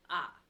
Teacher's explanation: it's high and it's flat so ah just a flat high tone and then you have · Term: first tone